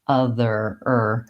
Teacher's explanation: Americans will always use, whenever there's an R, they will always use a tight back R.